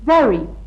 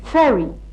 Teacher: One is voiced and the other isn't. V is voiced and F is voiceless.